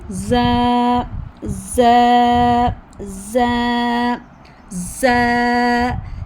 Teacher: ठीक है, बिल्कुल आपने आईने के सामने खड़े होकर देखना है कि आपकी ज़ुबान कहाँ पे है, नीचे ही है ना। तो ज़ुबान की नोक नीचे वाले दांतों के अंदरूनी किनारे के साथ लगा कर अता करना है। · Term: ज़ा का मखरज